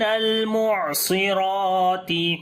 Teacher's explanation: لام کے اوپر صفت توسط کریں گے، عین کے اوپر بھی صفت توسط ہوگا